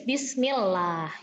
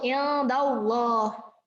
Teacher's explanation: Kalau fathah ketemu loh, bunyinya tafkhim jadi tebal, bukan lah ya.